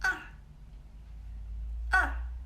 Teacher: And the fourth tone, like just fall down, yeah, from high to low. Soft, quick and strong, yeah.